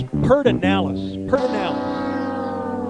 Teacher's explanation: You're missing the D syllable. Yeah, looks like there's no R in front of the D, but that's what they say.